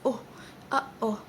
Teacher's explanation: when you stop the air flow and suddenly you release it